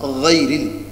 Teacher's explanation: গাইন গ এই গলার শেষ অর্থাৎ যেটা জিহ্বার গোড়ার সাথে